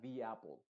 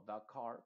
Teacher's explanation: cuando la siguiente palabra empieza con una vocal Entonces vamos a decir di en vez de da